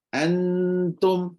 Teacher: Ya, huruf nun, bunyi nun akan dominan. Akan mendominasi bunyi ta tu. Dan hilanglah bunyi ta.